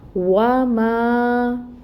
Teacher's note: ماں پہ الف مد ہو رہی ہے کیونکہ الف ساکن سے پہلے زبر کی حرکت ہے، فتح ہے، تو یہاں پہ ماں کو 2 کاؤنٹس لمبا پڑیں گے